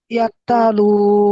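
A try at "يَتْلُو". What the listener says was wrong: আরে তা, ইয়া তা করছে কেন? ইয়া তা জবর কি হয়? ইয়া তা জবর কি হয়? ইয়াত, বলেন।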